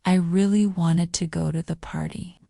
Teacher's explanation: the difference you're not stressing words like two or the nstead you're making really and party stand out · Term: word stress